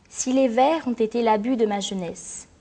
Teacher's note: le E final du mot jeunesse ne se prononce pas.